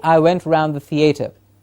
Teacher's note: so a schwa at the beginning of around